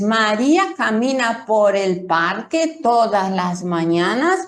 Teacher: mi voz desciende al final.